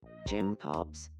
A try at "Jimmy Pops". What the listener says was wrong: No, Jimmy Pops. No, Jimmy Pops. He's not pronouncing the me. Jimmy Pops.